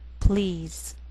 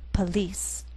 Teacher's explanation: The first is one syllable, and the PL blend together.